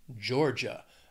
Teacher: two syllables stress on that first syllable